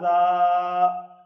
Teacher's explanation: اب یہ زال جو ہے اس کے اوپر کھڑا زبر ہے تو اس کو ایک الف کی مقدار لمبا کر کے پڑھنا ہے اور اس کے اوپر سیٹی کی آواز سے بچنا ہے